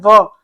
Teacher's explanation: और दंत ओोष् से केवल एक है व। यानी दांत और होठ दोनों मिला के आपका जो बनता है वो बनता है व